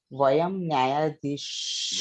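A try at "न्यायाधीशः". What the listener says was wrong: Nyaya. Ya has to be longer. Okay, it's Dirga.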